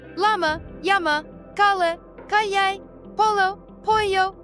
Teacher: LL and Y both sound like English Y.